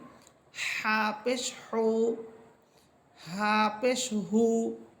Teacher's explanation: কণ্ঠনালীর মধ্যখান থেকে হা বলতেছি।